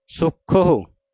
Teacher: ਤਰ੍ਹਾਂ ਜੇ ਔਂਕੜ ਹੈ ਫਿਰ ਸੁਖਹੋ ਜਲਦੀ ਦੇ ਨਾਲ ਪੜਿਆ ਜਾਵੇਗਾ। ਹੋੜੇ ਦੀ ਮਾਤਰਾ ਨਹੀਂ ਬੋਲਣੀ ਔਂਕੜ ਦੀ ਮਾਤਰਾ ਬੋਲਣੀ ਹੈ